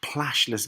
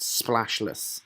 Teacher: We're expecting splashless, but I think the plashless gives it that slightly less emphatic sibilant sound. Splashless, the triple sibilants within it.